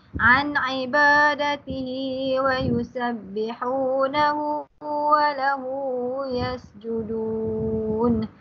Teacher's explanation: An ibadihi ialah nun mati bertemu dengan huruf ain, dia jadi izhar, tak perlu baca dengan dengung.